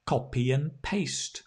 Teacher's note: Notice it's not and, it's an.